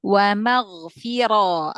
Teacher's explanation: ra tebalkan langsung angkat pangkal lidah